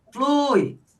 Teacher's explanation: Então esse U é a vogal e esse i é semivogal, o que significa que aqui nós temos um ditongo